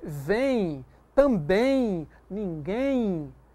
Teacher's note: Se você diz vem, também, ninguém, note, o M tem som de I. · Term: semivogal